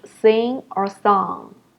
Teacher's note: you can feel that the ng sound is coming out of your nose